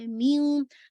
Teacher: یہ آپ کا ادغام ہو گیا نا, لیکن ادغام ناقص ہے, آپ کو اسٹل نون ساکن کی آواز سنائی دے رہی ہے. تو لیکن جو غنہ ہے, مراتب الغنہ, رینکنگ آف غنہ, وہ آپ کا کمپلیٹ ہے, پورا آپ کا اکمل ہے.